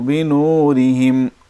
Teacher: را کے نیچے زیر ہے، را باریک ہوگی